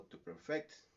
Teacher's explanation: en el verbo to perfect, que la acentuación cambia directamente a la segunda sílaba